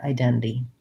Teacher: So identity, second syllable stress. I can say identity, but Americans will more often leave that middle NT out, the T part, identity. And they will flap this one.